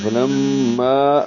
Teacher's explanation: فلما لام کو میم سے ملاتے ہوئے غنہ کریں گے، آواز ناک کے بعد سے ملے جائیں گے. فلما الف مدہ ہے، 2 حرکات لمبا کریں گے